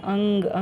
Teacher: अनुस्वार में नाक से आवाज़ या हवा निकलती है।